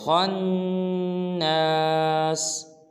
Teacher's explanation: خا کو موٹا ادا کریں گے، آگے نون پہ غنہ کریں گے